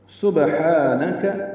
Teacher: سین صفیر کی آواز سے سٹی کی آواز سے نکالنا ہے، با ساکن ہے، اس پہ قلقلہ ہوگا